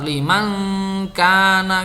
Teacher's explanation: nun sukunnya itu tidak jelas ya, dibaca samar-samar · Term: ikhfa hakiki